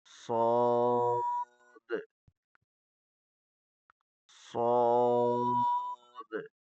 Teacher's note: صاد کو موٹا اور سخت کر کے پڑھنا ہے. صاد میں زبان کی نوک نچلے دانتوں کی پشت میں قوت سے لگے گی. · یہ سخت اور موٹا ہے. سیٹی کی آواز ہوتی ہے مگر کمزور